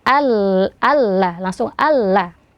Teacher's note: dimasukkan ke lam seakan-akan Ee tidak ada Nun ya Ee dan tidak dibaca ghunah atau tidak ada dengungnya karena dia idgham bila ghunah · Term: idgham bila gunnah